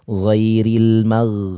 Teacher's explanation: ghain dia memiliki sifat rikhwah. Dia harus memanjang suaranya.